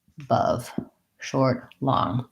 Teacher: in the word above i have two schwas i have my unstressed schwa here short and my stress schwa here long it looks like this in the dictionary above sounds like uh